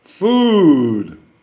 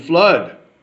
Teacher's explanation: food long oo sound and flood short a sound